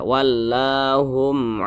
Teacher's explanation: depannya kan ini huruf Ain bukan huruf ba bukan huruf mim maka namanya izhar syafawi dibaca jelas tidak berdengung